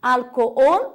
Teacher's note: a sílaba tônica é ol, a última, em português é álcool.